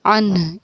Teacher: अन के आखिर में सीने से पढ़ी जाने वाली हा की भी थोड़ी अदायगी होगी। अन, इस तरीक़े से आखिर में हा की आवाज़ लास्टली निकलेगी हमारी, यहाँ वक़्फ़ मुतलक़ की अलामत, इसको समझिए।